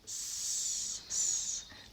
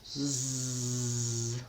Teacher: The only thing that changes is that I turn my voice on when I say Z.